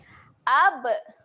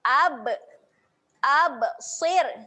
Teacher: Huruf ba ketika mati sifatnya ada lantun.